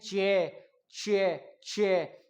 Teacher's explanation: चे थोड़ा सा सुनाई देता है, ए की ध्वनि ज्यादा आती है